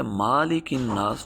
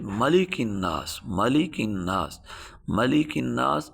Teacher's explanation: ملک الناس، اگر ہم اس کو پڑھیں گے مالک الناس تو یہ غلطی ہے، اس لیے کہ ہم نے الف کا اضافہ کیا جو کہ یہاں موجود نہیں ہے۔ ہم اس کو بغیر الف کے پڑھیں گے، بغیر کھینچے میم کو پڑھیں گے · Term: متحرک